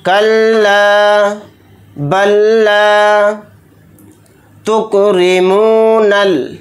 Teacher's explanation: रा के नीचे ज़ेर है तो रा को यहाँ पर बारीक पढ़ेंगे, मोटा नहीं पढ़ेंगे